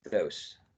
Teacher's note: So it is voiced exactly. It is interdental. Yes. It is fricative.